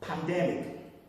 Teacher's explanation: pandemic is a good example where we have vowels in an unstressed syllable, but still taking its normal sound, not changing to schwa